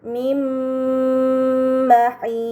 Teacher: Dan terakhir pada kata mim mahis terdapat mad bertemu dengan huruf yang disukunkan karena waqaf. Ini dinamakan mad arid, maka harus dibaca panjang selama 6 harokat.